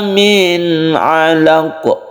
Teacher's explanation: nun mati bertemu dengan ain, izhar ini tidak berdengung.